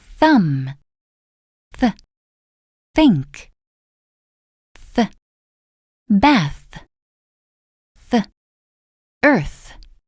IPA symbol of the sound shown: θ